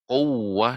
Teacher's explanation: quwwah dengan dimonyongkan bibirnya dan ditekan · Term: tasydid